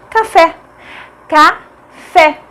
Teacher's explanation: Fé é a mais forte, é a última sílaba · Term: palavras oxítonas